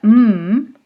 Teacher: we are closing the lips to make the labial closure for the mmm the N we are creating closure by the